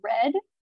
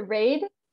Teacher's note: the word red generally gets raised